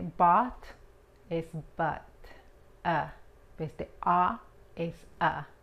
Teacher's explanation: But es como la A, pero tienes que relajar la boca muchísimo más, especialmente la mandíbula